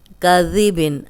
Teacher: ذال جو ہے نرم پڑھیں گے اور سیٹی کی آواز نہیں آئے گی